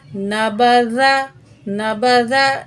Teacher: यहाँ खींचना नहीं है, ज़बर हैं तीनों और तीनों ज़बर को आराम से पढ़ेंगे